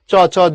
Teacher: জিহ্বা ও তালুর স্পর্শের পরেই উভয়ের মধ্যে বায়ুর ঘর্ষণজনিত ধ্বনি বের হয়ে উচ্চারিত হয়